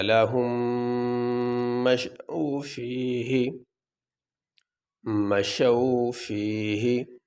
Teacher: ان دونوں میموں کو ملا کے ایک میم بنا کر ایک ہی میم پڑھیں گے۔ اس میم کو اس میم میں داخل کر دیں گے تو ایک ہی میم یہاں پہ پڑھا جائے گا۔